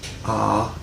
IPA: ʌ